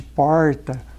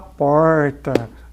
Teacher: aquele tradicional R retroflexo de porta